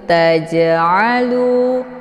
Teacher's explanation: cara bacanya jimnya dipantulkan dengan pantulan ringan tajalu keluar bunyi Je tajalu namun ditekannya sedikit ya untuk sekedar